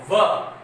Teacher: व दांत और ओष्ठ दोनों क्या होते हैं, शामिल होते हैं। दंत प्लस ओष्ठ, क्या नाम पड़ा, दंतोष्ठीय।